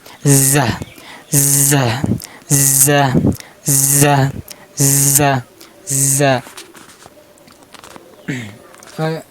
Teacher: জিহ্বার আগাটা নিচে দুই দাঁতের আগার সাথে উচ্চারণ করবেন। যা একটা শব্দ হবে, যা যা যা এর একটা শব্দ হবে, এই একটা শব্দ না হলে উচ্চারণ হবে না।